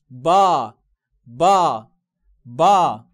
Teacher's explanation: ده مد الف مفخم وقته طويل.